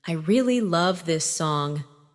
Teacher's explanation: Falling tone for statement.